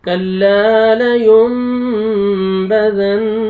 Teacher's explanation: तो यहाँ पे इक़लाब हो रहा है, नून साकिन और तनवीन के बाद जब बा आता है तो नून को मीम में चेंज करते हैं